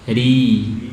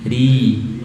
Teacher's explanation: huruf ro yang kasroh nanti kita tipiskan